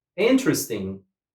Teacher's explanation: We put the stress on the first syllable.